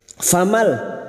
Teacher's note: masuk pada huruf lam tanpa mendengung, tanpa ditahan lama-lama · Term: idgham bila guna